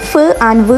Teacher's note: ലേബിയോഡെൻ്റൽ produce ചെയ്യുമ്പോഴത്തേക്കും sounds produce with the upper teeth ആൻഡ് the lower lip